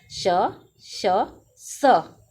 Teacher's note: श श स ये तीनों महाप्राण और अघोष हैं